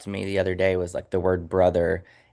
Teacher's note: the word brother, and it was like there was a V in there, so it was like brother.